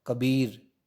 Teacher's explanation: जैसे हम राम बोलेंगे, राम, तो रे पे जोर पड़, बल, तो बे पे जोर पड़ रहा है। और कबीर में बी पे जोर पड़ रहा है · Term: बालाघात